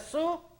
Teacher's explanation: si dicen ustedes su, estamos diciendo su, las cuerdas vocales no están vibrando y está mal, está incorrecto.